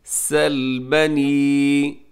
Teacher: سین میں سیٹی ہوتی ہے اور سیٹی باریک سیٹی کی آواز آنی چاہیے۔ سل لام کو ہلانا بھی نہیں ہے۔